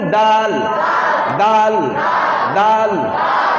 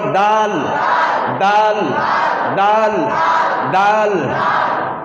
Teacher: জিভের ডগা উপরে দাঁতের গোড়া